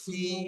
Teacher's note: খাড়া জের ইয়া মাদ্দার সমান, তাই এক আলিফ পরিমাণ টান দিয়ে পড়বো